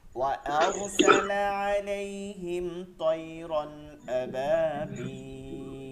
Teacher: এখানে গুণনা করা যাবে না, এটা মিম সাকিনে ইজহার, মিম সাকিনের পরে জজমালা মিমকে মিম সাকিন বলে, এরপরে ত হচ্ছে ইজহারের হরফ, বা মিম বাদে বাকি সব ইজহারের হরফ।